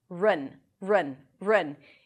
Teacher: That's also the primary stress, so this syllable is going to be longer, louder, and higher in pitch. In vi, and then run, an R, a schwa, and an N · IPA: rən